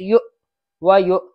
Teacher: یہ واو نہیں پڑھی جائے گی، حمزہ پڑھا جائے گا، حمزہ پر جھٹکا رہے گا